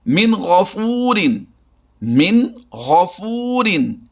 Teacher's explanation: یعنی یہاں پر ہم نے ظاہر کر کے پڑھنا ہے، آواز کو چھپانا نہیں ہے